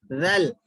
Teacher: ذال پڑھتے وقت میں زبان تھوڑی سی باہر نکلتی، تھوڑی سی باہر ظاہر ہوتی دو دانتوں کے درمیان سے. ذل، ذال تھوڑا سا نرمی سے پڑھا جاتا ہے.